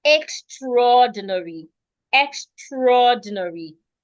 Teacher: Now remember that this word normally is supposed to be extra ordinary. But when we pronounce it, the A doesn't say anything.